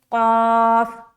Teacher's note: بعض لوگ ایسے جڑیں گے جو موٹا اور باریک سمجھ نہیں آئے گا، تو میں ان لوگوں کو بتا دوں کہ لائٹ جو ہوتا ہے نا، لائٹ، اسے کہتے ہیں باریک حرف، اور جو ہیوی بنا کر پڑھا جاتا ہے، یعنی کہ اس کو پڑھتے ہوئے ہمارا جو منہ ہے نا وہ تھوڑا گول ہو جائے گا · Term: موٹا حرف